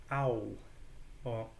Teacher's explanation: those are two vowel sounds very close together, smashed very close together, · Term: diphthongs